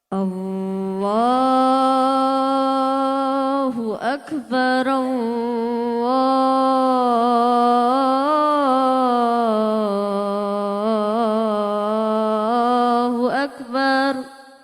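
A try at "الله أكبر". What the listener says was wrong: Nah, kamu lagunya sebenarnya udah bagus, tapi nadanya kurang tinggi. Nah, azan itu manggil orang itu kudu semangat, biar orangnya yang datang banyak. Coba lebih keras lagi. Allahu Akbar, Allah. Ngono lho nak, jempuk banter ayo, jerit.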